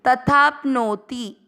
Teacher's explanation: तथाप्नोति इसमें तथा धन आपनोति दो शब्द बनेंगे। तथा में आ की मात्रा और आपनोति में आ और आ मिलकर आ बनेगा, इसलिए तथाप्नोति बन गया